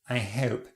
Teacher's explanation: Now in RP, we are saying the H, I hope. The diphthong is quite front but closer, hope.